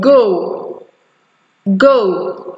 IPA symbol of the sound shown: gəu